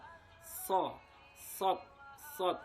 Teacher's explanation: tempat keluarnya dari ujung lidah dengan lapisan bagian dalam gigi seri bagian bawah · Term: huruf sod